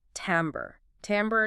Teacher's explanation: That French influence which gives us that slightly nasalized am sound is key.